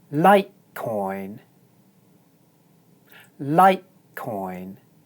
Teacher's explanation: this word has two syllables and the stress is on the first syllable. That means that the first syllable is pronounced high and the second syllable is pronounced low.